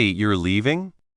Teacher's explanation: With a rising tone, it clearly sounds like a question showing surprise or asking for confirmation. The words are the same, but the intonation changes the whole meaning.